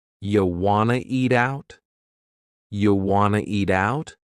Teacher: We've dropped the question word completely, do. Just yeah, and then we have reduced want to become wanna. This is a common reduction in English.